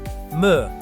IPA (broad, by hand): m